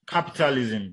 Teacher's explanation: So the stress is on the first syllable, which is cap.